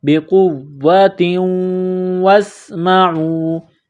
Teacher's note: بقوۃ، تا کے نیچے دو زیر تنوین ہے، تنوین کے بعد واو ہے، واو مشدد ہے تو واو کو دبانا ہے۔ بقوۃ واسمعوا، واو کو سین کے ساتھ ملانا ہے، واسمعوا۔